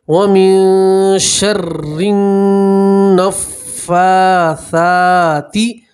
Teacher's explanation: گنہ کے لیے آپ نون کی آواز کو 2 سیکنڈ کے لیے ناک میں روکے رکھیے